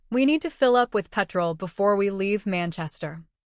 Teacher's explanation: The smaller words link while petrol anchors the meaning.